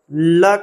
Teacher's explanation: जब ल को बोला जाता है तो हवा दोनों तरफ से निकल जाती है। · ल कहते ही लग रहा है कि दोनों किनारों से हवा बाहर से निकल गई। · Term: पार्श्विक